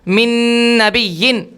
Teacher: ناک میں آواز جا رہی ہے لیکن مکمل نون کے مخرج اور نون کے اظہار کے ساتھ · نون کو مکمل ادا کرنے کے ساتھ ساتھ آواز کو خیشوم میں لے جانا ہے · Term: ادغام مع الغنہ, اظہار مع الغنہ